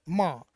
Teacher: जब आप उच्चारण करते हो तो हवा जो है नाक से निकलती हुई महसूस होती है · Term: नासिक्य